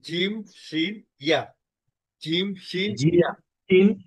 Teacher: জিম একেবারে পুরোপুরি তালুতে লেগে যাবে, শিন একটু ফাঁকা থাকবে, আর ইয়াটা আর একটু বেশি ফাঁকা থাকবে।